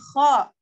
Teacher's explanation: Kho ini masuknya keluar dari tenggorokan bagian atas. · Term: huruf kho